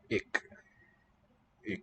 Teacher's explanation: Dutch just has a velar stop